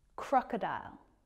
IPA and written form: ˈkrɒkədaɪl (crocodile)